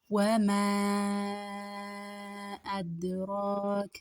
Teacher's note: ሚም መዳላት ከ4 እስከ 5 ሐረካ እንስበዋለን።